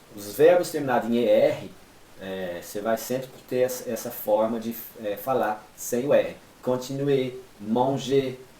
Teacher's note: Os verbos terminados em ER, você vai sempre ter essa forma de falar sem o R.